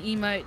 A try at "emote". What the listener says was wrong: I kind of love how you pronounce them as emote, by the way. I just say emote. But you're like, emote. Like, proper emphasis on the E, I find it really funny.